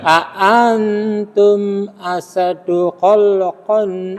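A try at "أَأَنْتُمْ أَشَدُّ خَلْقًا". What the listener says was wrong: Asadnya mboten pareng ngoten. Asadu kecepetan ditekan dulu, dihentakkan dulu. Asyaddu khalqan, asyaddu khalqan.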